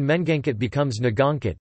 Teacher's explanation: In verbs, the prefix me- is often dropped, although an initial nasal consonant is often retained